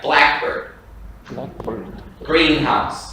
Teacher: the stress is on the first part if it's compound nouns. So if it's noun to compound, like blackbird, greenhouse.